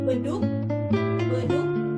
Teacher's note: K bunyi hambat velar tak bersuara dan lepas jika terdapat di akhir kata